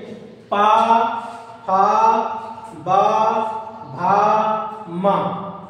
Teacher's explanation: आपके दोनों लिप्स दोनों होठ क्या हो रहे हैं? एक दूसरे से टकरा रहे हैं। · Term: ओष्ठ